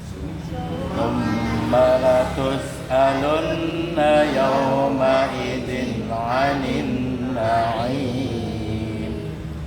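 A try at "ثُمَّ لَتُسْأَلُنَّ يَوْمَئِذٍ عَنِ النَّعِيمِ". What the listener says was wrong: Alhamdulillah ini udah luar biasa nih kemajuannya.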